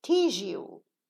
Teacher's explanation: a za changes into ja